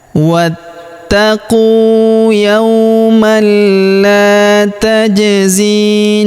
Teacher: Huruf zi kita panjangkan 2 harokat karena ya sukun di depannya.